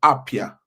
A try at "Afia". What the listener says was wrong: So, it's it's pronounced like F.